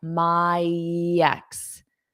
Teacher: So notice I can use this Y to glide. My ex. So you might hear a yex. Yeah, yex. My exes.